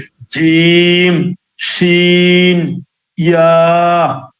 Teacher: জিহ্বার মধ্য তার বরাবর উপরে তার সাথে লাগিয়া 3টি হরফ উচ্চারিত হয়